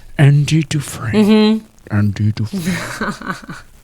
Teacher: you got to be airy. You got to be breathy.